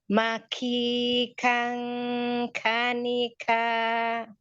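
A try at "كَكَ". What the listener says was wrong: Sekali lagi diulang. Gunahnya tambahkan panjangnya lagi.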